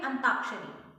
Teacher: तो वहां पे हम य का लोप कर रहे हैं, य ध्वनि का लोप कर रहे हैं। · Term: ध्वनि लोपन